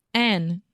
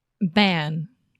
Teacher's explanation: So your tongue touches the roof of your mouth and it's right behind your teeth. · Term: final N sound